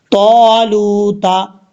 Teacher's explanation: لام کے بعد واو مدہ ہے اس لیے ایک الف کی مقدار اس کو لمبا کر کے پڑھیں گے